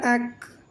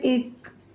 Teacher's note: کاف باریک ہے اس کو باریک پڑھیں گے، اس میں باریک سا ہمس ہوگا